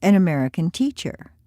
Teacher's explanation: this is a description so the stress is on teacher